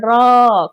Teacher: लुंठित या प्रकंपित व्यंजन कहा जाता है, जिसे उच्चारण में र जो है क्या होता है? र कहने से र जो है कपाता है, इसीलिए प्रकंपित व्यंजन कहा जाता है